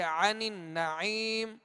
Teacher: عین کو وسط حلق سے ادا کریں گے، نون مشدد پر غنہ کریں گے. پھر آگے عین ہے، آگے یا مدہ ہے، لہذا ان تمام قواعد کا خیال رکھتے ہوئے ہم اس کی مشق کریں گے تو آسانی ہوگی.